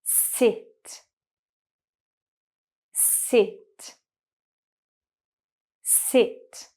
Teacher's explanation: your tongue is a little higher in your mouth, closer to the front. I. Stretch out your lips a little, and it's a short sound. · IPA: /I/